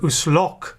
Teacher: The primary stress falls on lo, not on us.